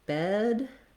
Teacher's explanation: The vowel will be a little longer in bed because the D is voiced